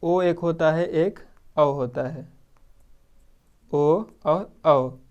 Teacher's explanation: ओ और औ, कंठ और ओठ दोनों से होता है